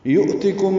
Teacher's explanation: یؤتکم میں حمزہ ساکن جھٹکے سے ادا ہوگا